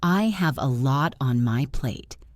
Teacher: Listen to the stress on lot and plate.